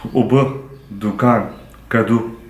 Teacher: So this is the pure U, and there's no diphthong like food, boot, rule.